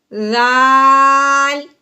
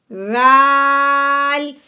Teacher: پہلے ہمیں یہ سمجھنا ہے کہ ذال کو نکالتے کہاں سے ہیں، یعنی کہ ذال کا مخرج کیا ہے۔ اوپر والے دانت، نیچے والے دانتوں کے درمیان میں ہم نے زبان کی نوک باہر لے کے آنی ہے